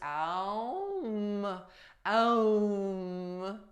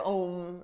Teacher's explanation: they pronounce it with two syllables, Ah and Oh